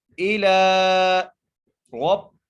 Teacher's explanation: را کو موٹا کر کے پڑھیں گے، را کو با سے ملائیں گے، کاف کو را سے ملائیں گے.